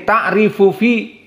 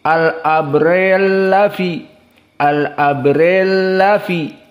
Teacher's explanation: Ta'rifu fa-nya mutaharrik dengan fi fa-nya mutaharrik, maka ta'rifu fa al-mutaharrik dan fi fa al-mutaharrik di sini dalam keadaan mutamatsilain, fa bertemu dengan fa, dinamakan idgham al-kabir